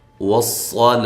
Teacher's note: صاد کو خوب موٹا کر کے پڑھنا ہے، واو کو ہونٹوں کو گول کرتے ہوئے، لام کو باریک پڑھنا ہے، لا۔ وقف کی صورت میں یہاں مد کر سکتے ہیں، لمبا کر کے وقف کر سکتے ہیں، اور گول تا کو ہائے ساکنہ میں تبدیل کر دیں گے وقف کی صورت میں۔